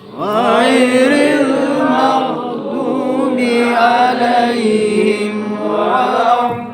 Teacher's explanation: Waladdallin itu namanya mad lazim mutsaqal kalimi ya. Jadi memang harus panjangnya itu 6 harkat gitu. Gitu. Waladdallin jangan sampai kurang.